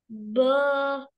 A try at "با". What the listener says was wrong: با موٹا نہیں، باریک پڑھیں.